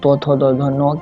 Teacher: और इसी तरह तवर्ग को दंत व्यंजन कहा जाता है, क्योंकि अगर हम लोग तो थो दो धो नो किसी भी तरह के वर्ण का उच्चारण करते हैं, ध्वनि का उच्चारण करते हैं, उस समय हमारी दांत जो है वो जीभ से लगती है और हवा बंद हो जाती है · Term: दंत्य व्यंजन